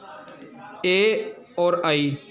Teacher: ए और आई का इनका उच्चारण स्थान है कंठ और तालु, संयुक्त रूप से है। कंठ और तालु दोनों को एक साथ जो है इसमें प्रयोग में आता है।